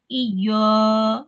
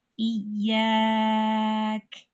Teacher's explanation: Iya, maka lidahnya harus dihamparkan dan dibacanya tipis. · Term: tarqiq